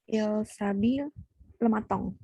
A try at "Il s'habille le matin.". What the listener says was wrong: Bukan matong tapi matang. IN ya. Bukan sabil.